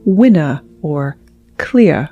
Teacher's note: transatlantic speakers drop the R at the end of a word, like winner or clear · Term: lack of rhoticity